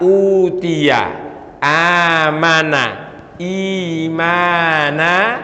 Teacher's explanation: Di sini dibacanya berarti panjang. Cara membaca panjangnya cukup dengan 2 harakat atau 1 alif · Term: mad badal